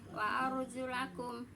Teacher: Jadi ro tafhim ya agak tebal Bu ya, ro-nya agak tebal